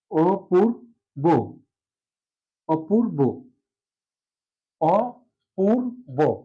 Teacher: অপূর্ব এভাবে লিখবো। তাহলে আদ্য অ হয়ে গেল ও, অর্থাৎ অ ধ্বনির সংবৃত উচ্চারণ হলো